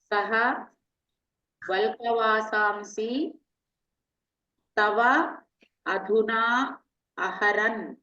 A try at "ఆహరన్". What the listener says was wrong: ఆహరన్ అని ఆహు సరిగ్గా ఆహరన్. ఆహరన్ దీర్ఘం.